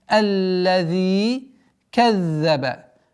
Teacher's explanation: الذي. Удваиваем лям. Удлинение в размере двух огласовок. Кеср применяем.